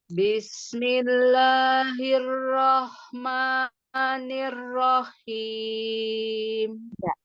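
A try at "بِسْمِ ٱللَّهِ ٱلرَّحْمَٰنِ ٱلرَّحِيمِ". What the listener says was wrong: Jangan nir, tapi ni. Nah, itu nggak boleh dimiring-miring. Ya, ni. Iya, huruf H ya. H itu adanya di tengah. Jadi latihan H, hi, hu, ha, hi, hu, ah.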